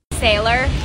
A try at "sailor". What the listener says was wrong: There's no R. It's Sailor.